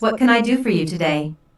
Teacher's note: Notice that this question starts with what, so the intonation drops at the end of the question.